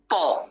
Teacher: Ta bukan huruf bibir. Kita tak kacik bibir.